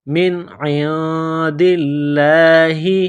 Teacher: کتاب من عند اللہ، من عند اللہ، عین کو نون کے ساتھ ملانا ہے، نون ساکن کے بعد دال ہے، حروف اخفا ہے تو نون ساکن پر غنہ کریں گے، دال کو لام کے ساتھ ملائیں گے، لام کو دبانا ہے، سختی کرنی ہے، لفظ اللہ کے نام سے پہلے زیر ہے تو لفظ اللہ کے نام کو باریک کرنا ہے۔